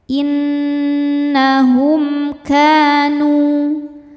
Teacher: Innahum, hum ada hukum izhar syafawi karena ada mim sukun yang menghadapi huruf selain mim dan ba. Di sini hurufnya adalah huruf kaf. Cara bacanya mim sukun dibaca jelas.